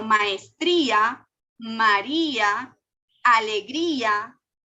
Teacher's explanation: una vocal cerrada junto a una vocal abierta con la diferencia que esta vocal cerrada es acentuada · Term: hiato